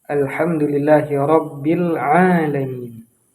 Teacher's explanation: yang harus kita gunakan adalah huruf ain, bukan huruf hamzah. Ketika kita membaca alamin, maka akan berubah artinya.